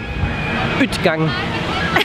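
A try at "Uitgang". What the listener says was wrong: Nein. Das ist das A und das Ü hintereinander ausgesprochen.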